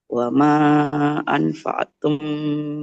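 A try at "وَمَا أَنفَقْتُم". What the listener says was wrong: Di sini ada qaf sukun Ibu. Harus memantul. Wama mimnya karena panjang mim kan fathah ketemu alif panjang.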